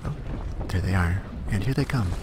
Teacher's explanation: my late night Warthunder voice takes a lot of air. It's very breathy.